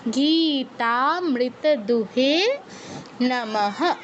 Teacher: মাঝখানে মৃত দু এতটুকুতে কিন্তু দীর্ঘ করা যাবে না, দ্রুত বলতে হবে · বিসর্গের পরে কিছুই নেই, তাই পূর্ণ হয়ের মতো উচ্চারণ হবে নমঃ